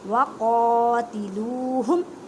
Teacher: قوف کو ادا کرتے وقت خیال رکھیں کہ کاف کی آواز نہ آئے کیونکہ حروف مستعلیہ موٹے حروف میں سے ہے